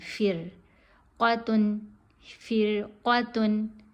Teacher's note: را باریک پڑھی جائے گی, قاف موٹی پڑھی جائے گی